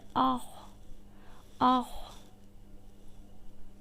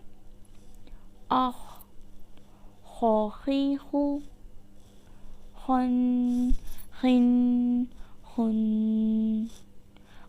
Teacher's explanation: خو حلق کے اوپر والے حصے سے ادا ہوتا ہے